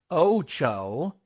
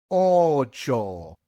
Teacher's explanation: you must pronounce just one vowel sound when you pronounce the o's